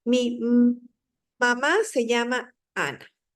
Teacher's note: Una prolongación, exacto, porque estamos alargando más de lo usual el sonido de la M